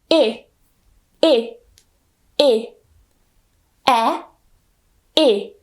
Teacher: though we don't smile it's miserable short and miserable okay so keep it short and keep your mouth also not smiling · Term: miserable e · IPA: ɪ